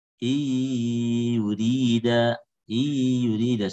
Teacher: Seharusnya ada gunnah karena dia idgham bi gunnah